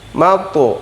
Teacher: Salamun hiya, ha gede atau ha besar, hadada, salamun hiya hatta, kemudian disusul oleh ha kecil, salamun hiya hatta mato, ada to sukun, hukum qalqalah, mato, bukan u bukan o bunyinya, tapi mato antara u dan o, mato, la'il fajr, kemudian ro sukun tebal, fajr, fajr, seperti itu.